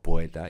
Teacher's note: yo podía pronunciarlo como si fuera un diptongo